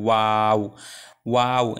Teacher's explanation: তো ওয়াওয়ের উচ্চারণটা আসলে খুবই সহজ। এখানে দুই ঠোঁট গোল করে মাঝে একটু ফাঁকা থাকবে, এরপর আস্তে করে বলতে হবে ওয়াও ওয়াও।